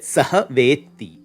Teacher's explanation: the dakara that it ends with has had to lose the voicing to match the unvoiced takara in your ending